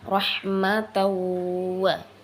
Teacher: tanwin fathatain jumpa dengan wow begitu ya, jadinya rahmatawa, ditahan dikit begitu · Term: idgham bigunnah